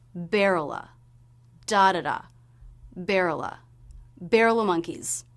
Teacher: we'll reduce the word of to just have the schwa sound. No consonant at all.